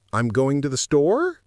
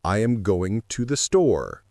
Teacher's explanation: You end sentences with an upward inflection, turning statements into questions. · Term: upspeak